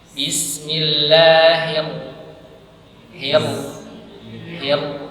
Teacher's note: ketika hi masuk ke roh, rohnya ini tebal.